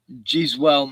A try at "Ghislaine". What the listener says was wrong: Ghislaine. Ghislaine. They call it a Ghislaine. Ghislaine. They don't pronounce the S, but he's got an accident, so it's